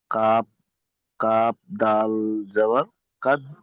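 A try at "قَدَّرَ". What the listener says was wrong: ওটা কাফ নেই, ওটা কফ। কফ দাল জবর কদ, দাল জবর দা, কদ দা।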